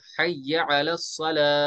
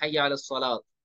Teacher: Round था जिसको हम गोल ता कहते हैं, ऐसे लिखा जाता है या कभी ऐसे लिखा जाता है लास्ट, इसको बोलते हैं गोल ता। गोल ता को वक्फ में हा साकिन में बदल देंगे